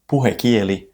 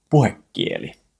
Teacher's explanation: But, when you listen carefully to native speakers when they pronounce it, they will say something much closer to puhekieli with a double consonant, a double K. So, for clarity, the spelling says puhekieli, but the correct pronunciation is puhekieli. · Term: boundary gemination